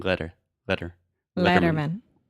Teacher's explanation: so that quick flap t sound very similar to the Portuguese R sound